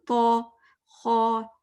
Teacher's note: جیسے heavy letters کے لیے اٹھانا پڑتا ہے نا، تو، خو، اس طرح اٹھانی ہے پیچھے زبان